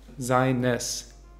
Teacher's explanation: Seines, auch mit e-schwa am Ende